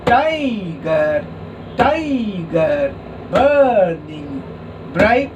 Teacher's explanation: So the first syllable is stressed and the second is unstressed. Tie, stressed, gar, unstressed. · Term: trochaic